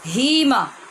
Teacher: اس ہا کو موٹا کر کے بھاری آواز میں پڑھیں گے